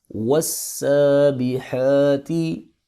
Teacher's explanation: سین اور حا کے اوپر کھڑی زبر ہے، اس کو ایک الف کے برابر لمبا کریں گے